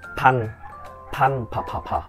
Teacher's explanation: Mọi người pờ bật hơi nha, pờ xì hơi.